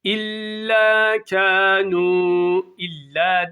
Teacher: İlla derken bir elif miktarı uzatıp Meddi tabii yapıyoruz